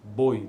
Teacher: ela é decrescente nesse sentido que atingiu a vogal no pico de sílaba primeiramente para que depois ocorra a semivogal